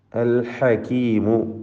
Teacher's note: ഹ അതിൻ്റെ മഖ്റജിൽ നിന്ന് തൊണ്ടയുടെ മധ്യത്തിൽ നിന്ന് വ്യക്തമായി ഉച്ചരിക്കണം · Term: ഹൽക്കിയായ അക്ഷരങ്ങളാണ്